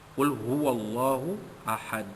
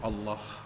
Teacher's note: Allah itu dibaca, lafzul jalalah itu dibaca tebal kerana huruf sebelumnya huruf waw itu bari atas.